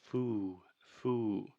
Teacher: In linguistics, many times we call this the dark L, but the biggest thing that needs to focus on here is she is creating too much of a circle with her mouth at the end of the word, which is creating that ooh, ooh sound. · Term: lip roundedness